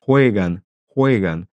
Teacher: en Amérique latine, la J est beaucoup moins accentuée, elle est beaucoup plus douce. C'est presque un H aspiré.